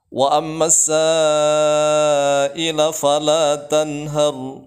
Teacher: Tanhar, nunnya harus jelas karena idhar. Kemudian ra di terakhir di situ dibaca tafkhim, tebal.